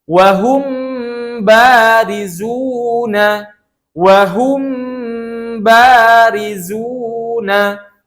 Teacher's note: Dibacanya dengan menahan dua harokat. Miqdarul harokatain, dengan ukuran dua harokat. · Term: ikhfa syafawi